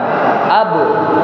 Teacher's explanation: Ba itu bisa dipantulkan ketika sukun atau diqqalqalahkan ab sedangkan ma tidak.